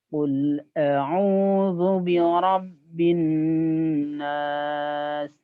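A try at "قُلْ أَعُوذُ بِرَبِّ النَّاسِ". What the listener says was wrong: Nah, tapi kalau terdengar sih ro-nya kurang tebal ya. Biro, ro ya. Ro. Ditebalkan ro ya. Birob bin nas.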